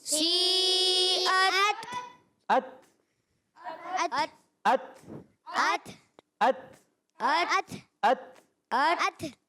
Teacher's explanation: یہ آواز آتی ہے ات، یعنی شدت کی وجہ سے سختی کے ساتھ آواز بند ہوتی ہے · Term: شدیدہ محموسہ حرف